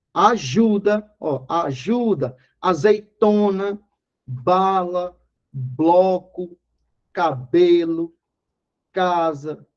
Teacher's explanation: então quando ela não recebe acento é considerada paroxítona ou seja o acento É prosódico é só na fala na pronúncia na penúltima sílaba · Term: paroxítonas